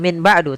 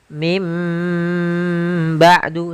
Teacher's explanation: bukan Min ba'du tapi mim ba'du sambil ditahan dengan gunahnya yaitu suara nunnya dirubah menjadi suara huruf mim jadi ikqlab itu merubah huruf suara huruf nun menjadi suara huruf